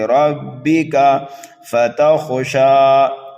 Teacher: خا کو پر پڑھنا ہے، یہ خا حروف مستعلیہ میں سے ہے ، شین کو ایک الف کے برابر کھینچ کر کے پڑھنا